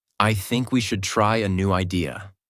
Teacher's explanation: Voice goes down at the end. This is called falling intonation, and it instantly makes you sound more mature, certain, and in control.